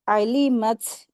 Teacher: ता जब सुकून लगता है तो इसकी इसके ऊपर हमस के साथ इसको अदा करते हैं।